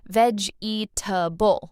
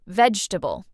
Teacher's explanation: Learners often say veg-eatable, all 4 parts. But native speakers say vegetable, shorter, smoother.